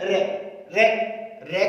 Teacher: रे हमारे मूर्धा से बोला जाता है या मूर्धन्य